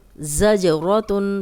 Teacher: रॉ को मोटा पढ़ेंगे क्योंकि उस पे ज़बर आ गई है